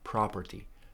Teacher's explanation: Property, stress on the first syllable, property. Piece of property.